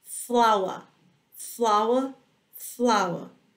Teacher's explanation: Que o inglês britânico não vai ter este som do R retroflexo